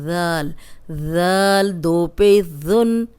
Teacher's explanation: اب ذال نرم ہے، سیٹی کے بغیر ہے، سامنے کے جو دو دانت ہیں ان کے کنارے پہ زبان رکھیں گے تو سیٹی کی آواز نہیں آئے گی۔